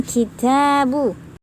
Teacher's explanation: Yang sering salah adalah mengucapkan ba sering dilipat dua bibirnya, padahal tidak seperti itu. Kemudian sifat huruf ba adalah jahar, jelas ya, tidak ada angin yang keluar dari mulut ketika mengucapkannya. Kemudian syiddah atau kuat, yakni semacam tekanan saat mengucapkan. · Kemudian kitabu, makhraj ta adalah menyentuhkan punggung ujung lidah ke pangkal 2 gigi seri atas. Sifat ta adalah hams, ya, pengucapannya disertai angin. Kemudian punya sifat syiddah, artinya menekan suara saat mengucapkannya.